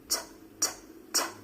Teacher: It's clear, it's concise, it's distinct. It's made by taking your tongue tip and tapping it on the ridge behind your top front teeth. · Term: true T